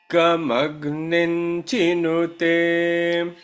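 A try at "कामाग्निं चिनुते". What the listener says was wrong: A little bit flat.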